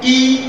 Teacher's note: दूसरे आधार पर ई, तो बड़ी ई बोल रहे हैं यानी दिल की ई, तो इसमें जिभ्या सर्वाधिक ऊंचाई पर जा रही है, और ज्योति बोल रहा हूं या ई बोल रहा हूं, तो इसमें क्या हो रहा है, ई जिभ्या थोड़ी नीचाई पर आ रही है